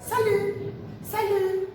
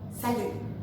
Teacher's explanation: E a gente observa que o T no final não é pronunciado. A gente fala salut, salut, o T no final não é pronunciado.